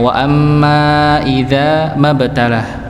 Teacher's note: Hamzahnya tidak terbaca dikarenakan dia posisinya sebagai hamzah istilahnya hamzah wasal